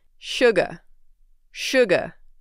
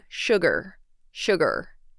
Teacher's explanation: you can pronounce it without the r